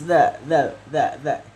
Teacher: Posisi lidahnya itu ada di gigi seperti kita membaca huruf ta ya. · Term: zal